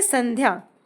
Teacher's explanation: जैसे संध्या स अनुस्वर आधा ध या संध्या इसमें न इसलिए प्रोनाउंस हुआ क्योंकि नेक्स्ट लेटर है ध